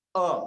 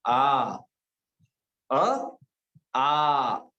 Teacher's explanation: एक मात्रिक उच्चार अ का था, दो मात्रिक उच्चार आ का हुआ।